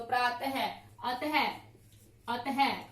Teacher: विसर्ग का जो उच्चारण है वो ह के रूप में किया जाता है, ह की तरह किया जाता है।